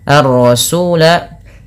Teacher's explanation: alif lam syamsiyah karena langsung digamkan kepada huruf ro